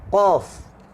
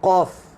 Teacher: Dua-dua pangkal lidah, tapi qaf menekan, kaf tidak menekan.